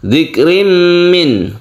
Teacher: Tanwin bertemu dengan mim kita sebut dengan idgham bi gunnah, yaitu suara dari tanwin ini masuk ke huruf mim dan bi gunnah atau dengan dengung.